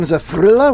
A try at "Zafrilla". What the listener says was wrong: No, Zafria. Well, because double L's, they're like Yama, yeah.